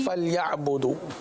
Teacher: फलयाबुदू, यहाँ पर देखिए फल या आइन की अदायगी को वाज़े अदा करेंगे। बुदू एक अलिफ तक खींच के पढ़ेंगे